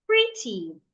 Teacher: An example is pretty, pretty, not pretty, pretty. I will say the first part, pre, louder, longer, clearer